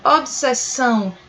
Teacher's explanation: por exemplo, obsessão, em que a pronúncia do S é mais demorada